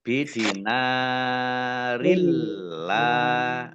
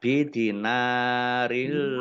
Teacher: ya dibaca panjang dua harakat kasr tanwi bertemu dengan huruf lam bacaan Idgham Bila ghunah masuk dan masuk dengan tidak mendengung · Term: idgham bila gunnah